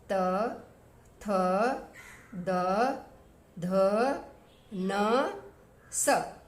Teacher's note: तीसरा स है उसका जो उच्चारण स्थान है वो दंत से है